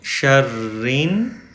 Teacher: من، وَمِن، شین زبر را، شر، راز نون زیر رین، شرین، را نون میں کنیکٹ ہوگی کیونکہ نون پہ پھر شد ہے